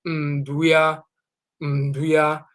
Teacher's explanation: You see here the plural is the N, the prefix, so it's ndua, and they'll pronounce the U as a nasal, so ndua becomes nduia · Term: nasal U